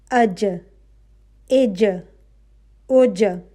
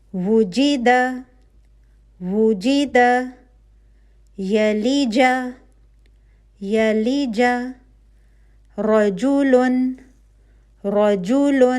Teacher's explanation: اور اس جیم کا مخرج ہے کہ جب آپ کی وسط اللسان یعنی کہ زبان کا درمیانی حصہ اوپر تالو پر قوت سے لگے تو حرف جیم ادا ہوتا ہے. ٹھیک ہے, آپ کی زبان کا درمیانی حصہ آپ کے اوپر کا تالو پہ جا کے لگ جائے گی زبان قوت کے ساتھ, تو حرف جیم ادا ہوگا.